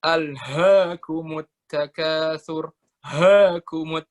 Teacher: huruf H itu makrosnya di tenggorokan paling bawah